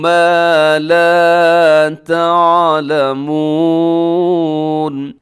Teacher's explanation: ما لا دونوں کو لمبا کرنا ہے کیونکہ الف مدہ ہے